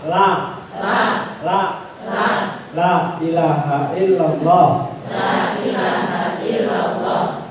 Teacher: Jadi la-nya itu cukup dengan ujung lidah disentuhkan langit-langit depan. Maka ketika ujung lidah menyentuh langit-langit depan, otomatis dia miring.